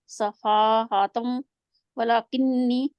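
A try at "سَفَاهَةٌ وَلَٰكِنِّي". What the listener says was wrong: आप तउआ कह के गए हैं, तउआ होंठ गोल करे। तुम वा।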